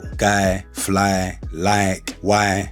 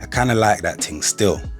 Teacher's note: the I in the middle of a word or the Y at the end of a word is usually pronounced with a twang